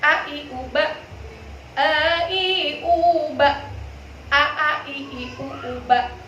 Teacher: Sedangkan hamzah kita syiddah, ya. Kita syiddah, ya, bukan rikhwah.